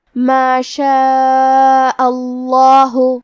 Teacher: اس مد میں ہم اپنی آواز 4 مد کے برابر لمبی کریں گے. آخری میں کیونکہ حمزہ پہ زبر ہے لہذا ہمیں لفظ الجلالہ مطلب کلمت اللہ کے لام کو تفخیم سے مطلب موٹی آواز میں پڑھنا ہے